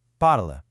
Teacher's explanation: So the pronunciation simply stops dead at the letter L.